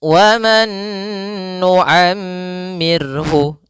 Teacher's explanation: Ra yang dia didahului dengan huruf sukun, maka ra-nya menjadi ra yang tipis, ra tarqiq. Ra tarqiq. Maka waman nu'ammirhu dibaca dengan tipis.